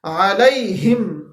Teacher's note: علیہم، پہلے عین ہے پھر ہا ہے، پھر ہا ہے، عین ہمارے پاس وسط حلق سے ادا ہوتا ہے اور ہا ہمارے پاس اقصا حلق سے ادا ہوتا ہے